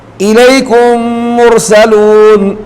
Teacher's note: میم ساکن کے بعد جب میم متحرک آ جائے تو ان دونوں کو ملا کر غنے کے ساتھ پڑھیں گے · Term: ادغام شفوی